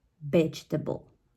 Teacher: the stress of the word it's at the very first syllable